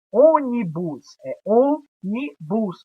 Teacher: quando a sílaba tônica está na antepenúltima posição proparoxítona